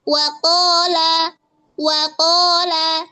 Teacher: cara bacanya itu monyong dulu ketika mengucapkan huruf wau tapi ketika monyong itu enggak ada suaranya belum ada suaranya